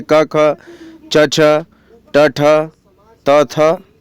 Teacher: इन ध्वनियों के उच्चारण में स्वर तंत्रियों में कंपन नहीं होता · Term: अघोष व्यंजन